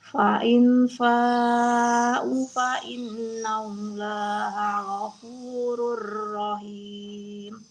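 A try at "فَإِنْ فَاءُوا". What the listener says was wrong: Fa'ing fa'u, u-nya 2 harokat ya.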